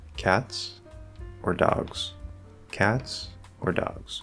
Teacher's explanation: dogs so what we're doing here is we have two options the first option is cats we're gonna rise to show that there's more and then the or triggers the end of the options and we fall at the end of the options · notice that i rise on the first option